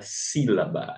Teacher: a sílaba tônica recai na antepenúltima sílaba